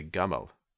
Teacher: in the Egyptian dialect the J sound is typically pronounced with a G sound